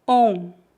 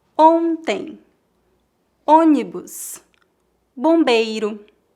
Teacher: A vogal O é nasalizada quando seguida pelas letras N ou M